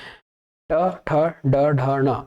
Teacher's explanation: क्या कहा हमने, ट, ठ, ड, ढ, न, ऐसा बोलने से आपका जीभ जो है थोड़ा राउंड लेके नीचे वाले हिस्से को टच कर रहा है, ये है मूर्धा।